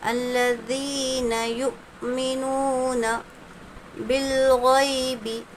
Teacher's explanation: حمزہ ساکنہ کے پڑھنے میں جھٹکا ہوتا ہے۔